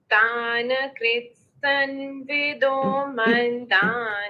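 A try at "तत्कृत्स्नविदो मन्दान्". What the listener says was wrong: 1 minute. Not sun.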